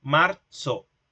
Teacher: como una T y una S, como que si hubiese una T y una S juntas. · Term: africado